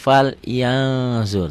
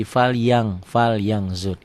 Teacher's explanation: Fal yan kan ada n-nya kan? Dibacanya tambah g jadi fal yang zur. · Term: ikhfa